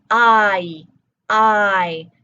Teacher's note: We've got [ɑɪ], [ɑɪ]. We go from that low back vowel sound up to a front high sound